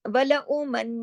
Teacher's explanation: سب جگہ بڑا غنہ کرنا ہے. اکمل غنہ یعنی ناک میں آواز کو چھپانا ہے